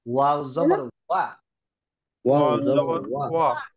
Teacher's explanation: আমরা ওয়া উচ্চারণ করেছিলাম দুই ঠোঁট গোল করে শুরু হবে